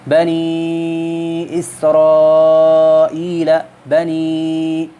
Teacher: تو قاعدہ یہ ہے جب حرف مدہ کے بعد سبب مد دوسرے کلمہ میں ہو تو اس وقت مد جو ہے وہ توسط کی جاتی ہے، یعنی کہ 3 الف کی مقدار کے برابر مد کی جاتی ہے